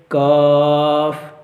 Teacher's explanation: اس کا مخرج کیا ہے کہ یہ بھی زبان کی جڑ سے نکلتا ہے، زبان کی جڑ سے ادا ہوتا ہے اور جو تالو کا سخت حصہ ہے وہاں سے ادا ہوتا ہے اور اس کو جو ہے وہ باریک پڑھا جاتا ہے